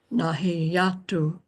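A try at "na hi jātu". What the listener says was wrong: You sounded that, you pronounced that jatu, almost it was written in, remember, jatu, not a yatu, jatu. Jatu, right.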